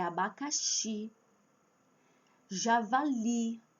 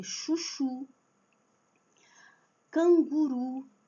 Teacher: se terminar com I ou U, então é a última sílaba que é forte